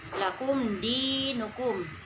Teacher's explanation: Di harus dibaca panjang sedikit atau 2 harokat. Di adalah mat tobi.